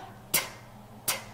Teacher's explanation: 성대가 울리지 않는 세는 소리예요